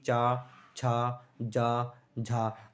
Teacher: आपकी जो जीभ है वो तालू से टच होती है दोस्तों। ठीक है दोस्तों, जो आपकी जीभ है वो तालू से टच होते हुए निकलेगी दोस्तों। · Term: तालव्य व्यंजन, तालब्य व्यंजन